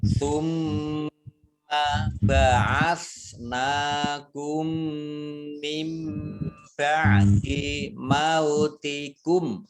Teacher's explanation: mim sukun bertemu dengan huruf mim, idgham mimi, atau bisa disebut idgham mutamasilain